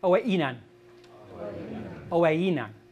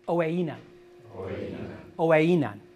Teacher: I said oweinan as if it had a glottal stop. Doesn't have a glottal stop, so therefore I should not make a break. It should be smooth.